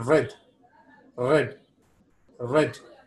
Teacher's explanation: Here, contrary to the flap or thrill, where we saw the active articulator strikes the passive articulator only once, here it strikes several times. The active articulator strikes against the passive articulator several times. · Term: roll or thrill